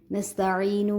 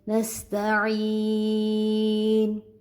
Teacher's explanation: جب یہاں پر ہم وقف کریں گے تو نون کو ہم ساکن کر دیں گے. نستعینو کی بجائے نستعین.